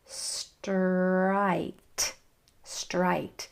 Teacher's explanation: big diphthong mouth movement for the I sound